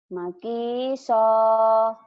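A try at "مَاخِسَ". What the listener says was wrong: Bukan makiso, Bu. Wah, bukan. Itu ciri khas orang Jawa, kadang-kadang H-nya jadi K. Go-nya jadi Kho. Kho-nya jadi K. Ini hi. Mahi. Jangan makisa ya. Jangan makiso. Mahiso. Mahiso.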